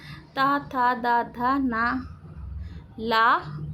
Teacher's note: जो वर्ण दांतों की सहायता से बोले जाते हैं उन्हें दंतव्य वर्ण कहते हैं